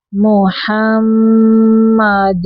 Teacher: میم مشدد پہ غنہ ہے